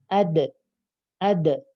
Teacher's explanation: dan sukun saat sukun ad ad Hai adet memantul jadi dirinya ujung lidahnya memantul tempel balik lagi nempel balik lagi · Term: Qalqalah